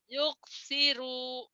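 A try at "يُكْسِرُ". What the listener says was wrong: Pendek, nggak ada yang panjang. Yuksiro. Yuksiro.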